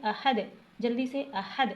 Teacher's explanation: آ کو کھینچنا نہیں ہے، بغیر کھینچے پڑھنا ہے